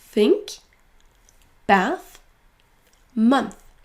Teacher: il faudra que votre langue sorte légèrement de votre bouche